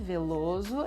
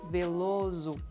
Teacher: The S will sound like a Z, Veloso, and the O will sound like U